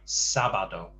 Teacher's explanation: sábado, again, to stress the first syllable